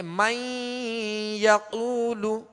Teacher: نون کو یا میں داخل کریں گے مگر غنے کے ساتھ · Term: ادغام